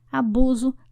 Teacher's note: abuso não tem som de s mas sim o som de z